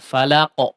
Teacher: langsung dipantulkan ya. Jangan telat mantul qafnya ya.